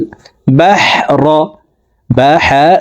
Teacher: হারফকে হলকের মধ্যখান থেকে উচ্চারণ করব